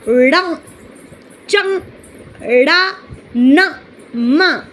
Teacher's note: नासिक्य। इन्हें बोलने में अपन को नाक का स्वर महसूस होने लगता है।